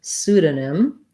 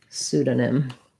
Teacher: has first syllable stress the p is silent so we start right on the s sound su this letters e u say the u sound so i